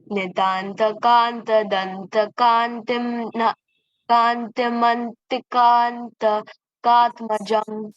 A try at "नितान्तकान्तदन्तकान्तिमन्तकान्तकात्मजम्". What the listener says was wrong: Okay, there's only one kanti. Everything else is kanta. Nitantakantadantakantimantakantakatmajam. You don't have to split it like kantim and then add. You can just say Nitantakantadantakantimantakantakatmajam.